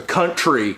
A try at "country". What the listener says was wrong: you're saying it as two words. Say it as one word. It's country.